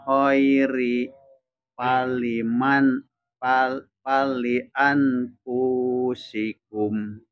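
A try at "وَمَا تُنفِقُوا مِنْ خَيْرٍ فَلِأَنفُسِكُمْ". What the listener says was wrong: punya tidak panjang Pak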